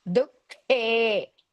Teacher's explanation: There are two dots, visarga between Du and K. So you have to pronounce half ha. Dukhe. He is Mahaprana and Dirgha.